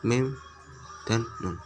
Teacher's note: bunyi yang timbul karena saluran nafas melalui hidung saja, seperti contoh huruf mim dan nun. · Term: syawamid anfiyah